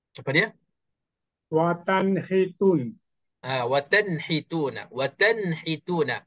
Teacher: Cara bacaannya kena jelaskan nun tanpa dengung. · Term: izhar halqi